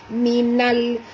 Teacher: Nyatakan bunyi lam ini secara izharnya terang tanpa dilantunkan.